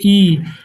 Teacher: इस स्वर के उच्चारण में मुख द्वार लगभग बंद रहता है। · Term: संवृत स्वर